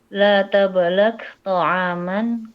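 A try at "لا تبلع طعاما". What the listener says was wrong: Oke, itu salah ya. Itu bukan tablak, dari itunya salah ya, dari bukunya. Tabla' pakai ain. Tabla'.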